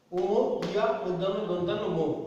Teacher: এখন এই 5টা বর্গের শেষের যে 5টা ধ্বনি আছে, প্রত্যেক বর্গের শেষের যে ধ্বনি ও, ইয়া, মূর্ধন্য, দন্তান্ন, ম, এই 5টা বর্ণকে বলা হয় নাসিক্য ধ্বনি। কারণ এই বর্ণগুলো উচ্চারণের সময় নাক দিয়ে বাতাস বের হওয়া বা বাতাসের চাপের একটা প্রবণতা থাকে, নাক দিয়ে বাতাসটা বেশি বেরোনোর প্রচেষ্টা থাকে, তাই এগুলোকে বলা হবে নাসিক্য বর্ণ।